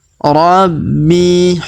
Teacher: Huruf bi kita tahan dan kita tekan karena terdapat tanda tasdid. Kemudian kita panjangkan 2 harokat karena ya sukun di depannya.